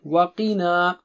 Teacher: قی پھر موٹا اونچا ہے، پھر نا باریک ہے